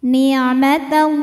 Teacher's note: lam pada lafaz Allah atau lam jalalah dibunyikan secara tafhim sebab huruf sebelumnya berbaris fathah maka bacanya kita tebalkan l nikmatallah pangkal lidah kita angkat ya